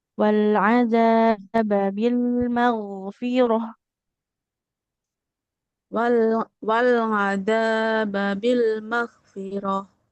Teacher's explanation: Huruf rnya enggak boleh panjang.